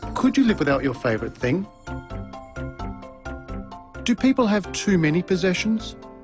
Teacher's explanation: Did you notice the pitch of his voice rise at the end of the questions? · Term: Rising intonation patterns